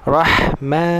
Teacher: Selepas tebalnya ra, masuk ke huruf ha. Huruf ha ni, ha orang Melayu panggil ha pedas. Dia lembut, dia ada nafas.